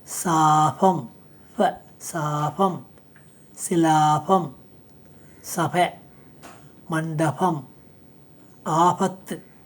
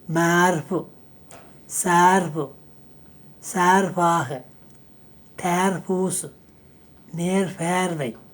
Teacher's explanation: ஃப ஒலி இது சிறிது ஒலிப்புள்ள ஈறுதல் உரசொலி, ஸ்லைட்லி வாய்ஸ்ட் பைலேபியல் ஃப்ரிகேட்டிவ்ஸ். இது சொல்லின்ற நடுவிலே 2 உயிர் ஒலிகளுக்கிடையிலும் இர், இல் ஒலிகளுக்கு பின்னாலும் வரும்.